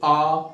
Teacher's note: कंठ से आ रही है ना आवाज